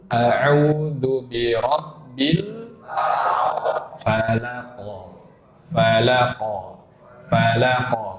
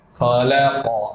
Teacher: Contohnya huruf qaf di surah Al-Falaq, ujungnya semua. Kita qalqalahkan dengan a atau dengan o? Dengan o. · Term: qalqalah yang tebal